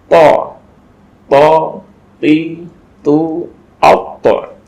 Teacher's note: To ini ujung lidah menyentuh kepada pangkal gigi seri bagian atas.